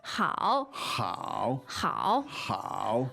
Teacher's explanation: also a third tone yes which means good